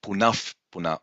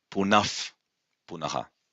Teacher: Visarga followed by P or P may change to F sound. Usually it does, and you can really hear this change in, when Pandits are chanting.